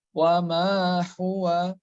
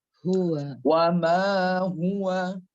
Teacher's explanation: Maka dia hanya hukumnya mad tabi'i. Kemudian huruf H penyebutannya harus besar. Itu H-nya H tebal, H besar. Enggak boleh wa ma huwa.